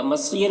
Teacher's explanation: مصیر میں صاد کو پر پڑھیں گے، اور یہاں پر یا مدہ ہے